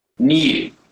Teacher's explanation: In the word new, Brits will tend to pronounce a y sound here. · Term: yod